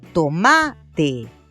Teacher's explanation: al cargar la voz en la penúltima sílaba, la palabra se escuchó correctamente